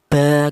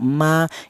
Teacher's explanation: huruf mim dan huruf ba ini dihasilkan dari kedua bibir yang rapat.